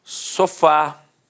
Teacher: Repare que a sílaba tônica é a última e é terminada de fato em A. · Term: oxítona